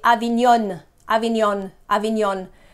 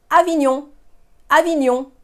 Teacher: in a nasal sound, the N is not there. It's linked to the O